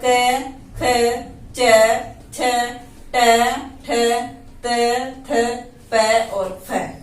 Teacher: कौन कौन से वर्ण होते हैं जिनमें नाद या गूंज नहीं होती है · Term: अघोष व्यंजन